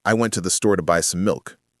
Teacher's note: Those are the content words. The little words in between I to the to some are unstressed. they get rushed. · The important words are went, store, buy, and milk.